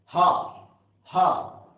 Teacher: है, हा हा, ये अंदर से स्वर तंत्री के अंदर से, कंठ के अंदर से वायु निस्सरित होकर के उच्चारण हो रहा है , तो इसलिए ये जो है स्वर यंत्रीय वाला सा हा,